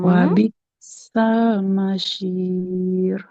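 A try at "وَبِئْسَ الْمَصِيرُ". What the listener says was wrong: Oke, alhamdulillah. Barakallah.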